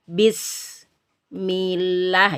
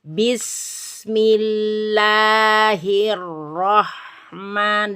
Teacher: bismillah bukan bism tapi disambung bismillahirrahman dan seterusnya ya seperti itu Jadi tidak boleh diputus antara bis dan Mi ya harus disambung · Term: sifat Roha